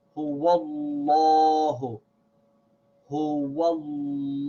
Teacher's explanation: So here we have the word Huwa, then the name of Allah. So the way we recite this is with a heavy vowel on the name of Allah. We say Huwallahu, Huwallahu.